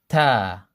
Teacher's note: T comes from the same place as the T in the English language, except that it's more flat on the roof of the mouth. It's more flat than the English T t is more towards the tip of the tongue.